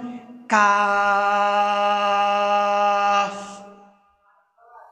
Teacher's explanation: জিহ্বার গোড়া এবং তালুর শক্ত অংশ থেকে উচ্চারিত হয় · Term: হরফে লাহাবিয়া